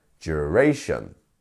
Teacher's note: duration three syllables here and our stress is on the middle one here so duration not duration or duration is duration practice that